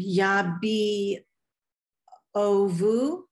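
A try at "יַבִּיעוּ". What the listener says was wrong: Yabiu. Yeah, the ayin just has the vowel sign, just u.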